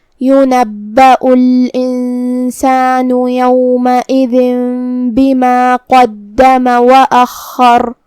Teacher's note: کلمت وأخر میں یہاں بھی حرف الخاء کی تشدید کا دھیان رہے، خاء کو 2 حرف کے برابر ادا کریں گے · قاف کو ہم موٹی آواز میں ادا کریں گے